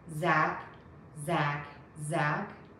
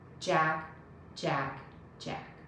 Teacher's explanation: and jack boy's names are pronounced in a very similar way zack has a z don't touch the teeth with your tongue jack has a j touch your teeth to start that sound